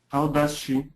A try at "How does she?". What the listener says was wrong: Remember, do we say how or ha? How does she?